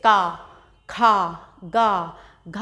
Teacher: क ख ग घ ण ये कंठ से गले से इनका उच्चारण किया जाता है। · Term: क वर्ग